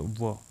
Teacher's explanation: दांत और ओष्ठ जिसमें आ रहे हैं, जिसमें व, इसमें दांत और ओष्ठ है, तो दंत्योष्ठ हो गया वो